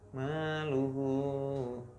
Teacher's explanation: Kalau dibacanya tuh 2 harokat gitu. Jadi mat silah qasirah itu dibaca 2 harokat.